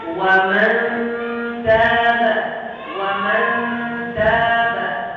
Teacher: Ujung lidah dengan pangkal gigi seri atas. Ujung lidah kita itu sudah siap-siap untuk menyebut ta ketika ikhfa itu. · Kalau huruf selanjutnya ta, nun ikhfa itu sudah mendekati makhrajnya ta.